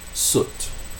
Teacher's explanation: also high back, but it's short, unrounded, lax